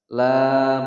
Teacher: La panjang dua ketukan mad tabi'i